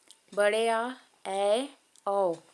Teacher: ऐसे स्वर जिनके उच्चारण में मुख द्वार पूरा खुलता हो पूरी तरह से खुल जाता है वह होता है विवृत स्वर